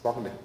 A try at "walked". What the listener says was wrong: but it's not walked. Walked. It's a little bit quieter. It sounds like a T. It sounds like a T.